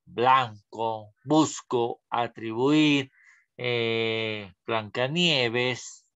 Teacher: se asocia a un sonido oclusivo bilabial sonoro, bilabial, que se representa así, B.